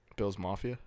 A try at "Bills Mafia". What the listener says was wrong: Maw. There's a maw in there. Like he's saying moth.